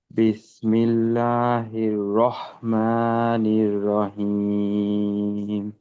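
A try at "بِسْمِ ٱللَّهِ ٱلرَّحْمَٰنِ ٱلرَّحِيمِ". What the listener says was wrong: আচ্ছা, এই বিসমিল্লাহর ভিতরে দুই হার, প্রথম হার উচ্চারণ কিন্তু ঠিক ঠিক ঠিক আছে। দ্বিতীয় হাটা কিন্তু গোলহার মতো হয়ে গেল। এই আপনার কিন্তু এরকম সমস্যা আহ, বিভিন্ন জায়গায় দেখা যায় যে একই হরফের উচ্চারণ এক জায়গায় হচ্ছে আর এক জায়গায় হচ্ছে না।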